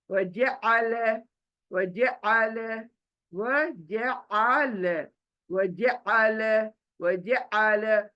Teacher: ज सिंपल है, आइन हलक के बीच में से है